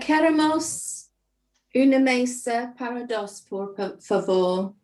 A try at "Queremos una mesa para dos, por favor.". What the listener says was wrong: I think that's exactly what I've got there. So perfect.